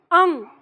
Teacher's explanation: पूरा ग नहीं आएगा, नाक में ही रहनी चाहिए, उससे बाहर नहीं, अंग।